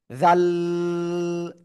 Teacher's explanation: তাহলে এখান থেকে হবে ওখান থেকে হবে না, কোথায় হবে? এই যে দুই দাঁতের আগার সাথে, জাল, তিন আলিফ টান হবে